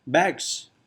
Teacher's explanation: g and s are obstruents, and yet they don't agree in voicing